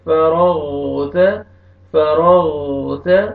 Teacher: فإذا فرغ، را کو مرزبر ہے، را کو موٹا کر کے پڑھیں گے، اور غین کو اپنے صحیح مخرج سے موٹا کر کے ادا کریں گے